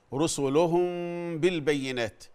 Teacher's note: الاخفاء الشفوي رسلهم بالبينات في غنه حركتين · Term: الإخفاء الشفوي